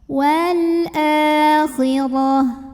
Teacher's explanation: maka cara membunyikannya dipanjangkan dua harokat well fb-nya Oh kemudian pokoknya dibaca tebal tafkhim karena barisnya diatas pangkal lidah diangkat